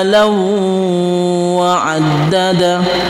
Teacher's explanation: Alladzi jama'a ma law wa 'addada ma law ma law, di sini ada tanwin lagi. Ada kasratain, ada fathatain bertemu dengan waw, itu idgham bi gunnah. Memasukkan huruf waw itu dengan dengung.